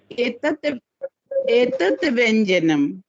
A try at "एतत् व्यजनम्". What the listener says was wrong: व्यजनम। व्यजनम व्यंजनम नहीं व्यजनम। व्यजनम।